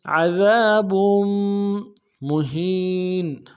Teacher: وَلِلْكَافِرِينَ عَذَابٌ مُّهِينٌ، عین کو موٹا ادا کرنا ہے، دال کو باریک ادا کریں گے، دال کے ساتھ الف مدہ ہے، ایک الف دال میں کھینچیں گے۔ با کے تنوین کو آگے میم کے ساتھ ملانا ہے، میم کے اوپر تشدید زور دیں گے